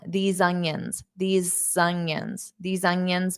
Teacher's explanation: You might hear a little bit of an s sound in front of onions because these ends on an s sound.